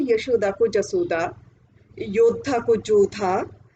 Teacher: आम तौर पर जो शब्द के आरंभ वाला य होता है उसे ज की तरह पढ़ा जाता है। जैसे यशोदा को जसोदा, योद्धा को जोधा, है ना, युद्ध को युद्ध, इस तरह से पढ़ा जाता है।